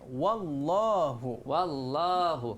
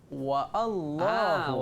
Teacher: Jadi alif tu Hamzah tu tak ada bunyi dah. Okey. Okey, dia tak ada bunyi.